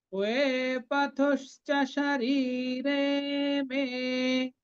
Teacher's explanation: রি এবং রে দুটো দীর্ঘ, মেটাও দীর্ঘ।